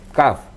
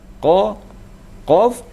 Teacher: Kalau kaf itu bagian ke depan di bawah. Tapi kalau qaf itu bagian anak lidah ke atas.